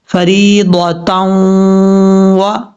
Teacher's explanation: اور یہاں پر تا کے اوپر دو زبر ہیں، دو زبر کی تنوین کے بعد واو آ رہا ہے حروف یرملون میں سے، اس لیے یہاں پہ غنہ ادغام ہوگا اور غنہ بھی کیا جائے گا ایک الف کی مقدار